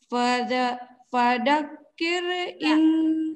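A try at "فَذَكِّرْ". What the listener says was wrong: Nah ini orang Sunda tuh. Ini sama kayak bunda. Fadha padakir. Fadzakir. Lidahnya keluarkan sedikit di depan gigi. Fadha.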